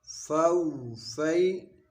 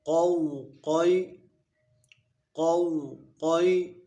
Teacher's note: واو ساکن سے پہلے زبر ہو تو واولین ہوگا، یا ساکن سے پہلے زبر ہو تو یالین ہوگا۔ حروف لین کو بغیر کھینچے، بغیر جھٹکا دیے نرمی سے معروف پڑھیں